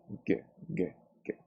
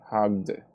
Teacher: This sound is voiced, so we say hugged